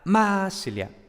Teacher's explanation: Y como, claro, había un acento tan grande en la primera sílaba, ya luego las sílabas siguientes pues se descuidaban un poco y por tanto la A se transformaba en I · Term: acento de intensidad